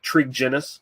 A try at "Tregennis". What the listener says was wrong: I hate to correct you, but it's a hard G, so it's Tregennis.